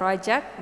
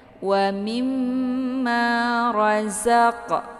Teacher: 'Zai' adalah huruf lidah. Letaknya dekat dengan ujung lidah. Jika Anda membacanya sebagai 'rajak', maka lebih condong ke huruf 'jim'.